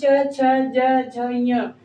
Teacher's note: च वर्ग देखिए स्पर्शी व्यंजन में जो च है च वर्ग के अंतर्गत जो पांच अक्षर या लेटर या फिर वर्ण आते हैं च, छ, ज, झ, ञ ये पांचो जो है वो तालव्य कहे जाते हैं। तालु से इसका उच्चारण तालु से होता है।